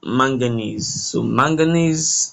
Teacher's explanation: So manganese, the ESE is more stressed.